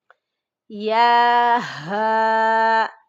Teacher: یہ ایک آنکھ والا ہا بھاری آواز میں ادا کریں گے۔ یہ سینے کی طرف جو حلق کا سب سے نیچے والا حصہ ہے وہاں سے ادا ہوگا